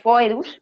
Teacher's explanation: también en griegos son una característica yo intentaré pronunciar foedus porque se supone que la vocal digamos más fuerte es la primera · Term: diptongos